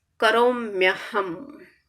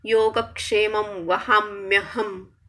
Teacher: When E plus A are coming together, then the consonant we get Y.